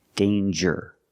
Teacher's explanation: there's no nasal sound there's no um it's a regular n